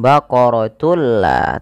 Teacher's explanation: diganti bunyi suara nunnya menjadi suara lam. Baqaratulla tapi tidak ditahan. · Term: idgham bila ghunah